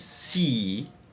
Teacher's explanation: a long high front vowel